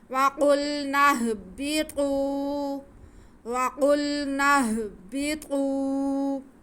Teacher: طوا پہ پیش ہے اور واو ساکن ہے, تو یہ واو مدہ ہو گیا. طوا کی آواز کو ہم کھینچ کے پڑھیں گے